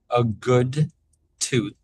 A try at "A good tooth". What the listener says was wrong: And make sure for tooth, that's an unvoiced TH. So make sure to extend it a bit longer because with it being short like that, it comes out kind of like a toot.